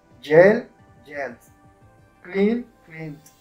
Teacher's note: Vibran estas letras. Entonces, el sonido que vas a hacer al final va a ser no de una T, sino de una D